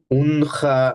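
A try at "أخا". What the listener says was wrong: নো নো নো don't say উন উন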